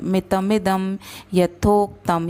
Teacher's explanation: द के ऊपर जो अनुनासिक है उसका उच्चारण म होगा क्योंकि अगला वर्ण य है